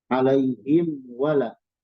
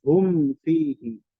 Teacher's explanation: mim sukun menghadapi wau dan Fa itu jelas mestinya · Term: izhar